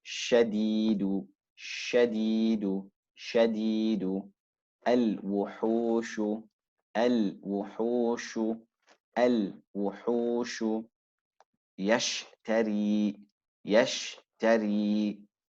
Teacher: the spreading of air throughout the mouth during the pronunciation of the letter sheen. This is a natural characteristic of the letter sheen. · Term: at-tafashi